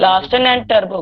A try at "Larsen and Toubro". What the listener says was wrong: it is Larsen and Toubro, not Turbo.